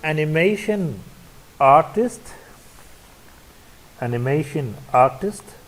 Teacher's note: here we have a compound noun so the stress will be on the first word and on the second syllable